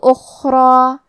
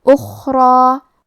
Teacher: حرف الخاء کی ادائیگی حلق کے اوپر والے حصے سے ہے، خاء حروف التفخیم میں سے ہے تو ہمیں خاء کو موٹی آواز میں پڑھنا ہے۔ حرف الراء کی حرکت ہے زبر تو ہمیں حرف الراء کو اور اس کے بعد مد الف کو دونوں کو تفخیم سے مطلب بھاری آواز میں ادا کرنا ہے۔